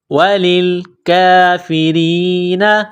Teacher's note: لام کو لام کے ساتھ ملانا ہے. کاف کے اوپر کڑا زبر ہے، 1 الف کے لمٹ میں کھینچنا ہے، را کو باریک کرنا ہے.